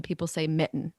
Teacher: i like when people say mitten and they don't put the t in there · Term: glottal stop